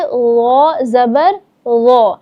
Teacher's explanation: غو جو ہے وہ نرمی سے ادا ہوتا ہے اور پر یعنی موٹا کر کے بھی ادا ہوتا ہے